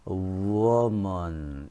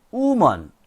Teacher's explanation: woman 이렇게 발음을 해야 되는데 이 W 발음을 생략한 woman 이렇게 발음을 하는 수가 많아요